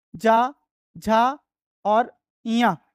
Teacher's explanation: च और ञ इन वर्णों का उच्चारण स्थान तालु होता है।